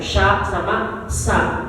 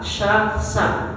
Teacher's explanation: Sya itu di tengah sa itu di ujung